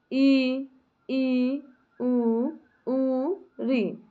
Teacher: ऐसे स्वर जिनके उच्चारण में मुख बहुत कम खुलता है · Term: समृद्ध स्वर